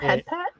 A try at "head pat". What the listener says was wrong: That's heat pat. You just said heat pat, not head pat.